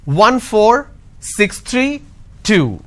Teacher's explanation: the moment I say two it's dropping that means it's end of the series two three one four six three two now the two is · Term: drop tone